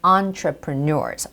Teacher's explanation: So entrepreneurs, it's not entree, it's entrepreneurs. So the stress goes on entrepreneurs, the last syllable